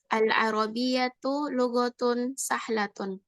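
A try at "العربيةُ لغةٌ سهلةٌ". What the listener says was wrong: Nah, bagus.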